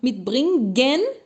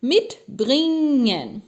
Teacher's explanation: O G depois de N não se fala.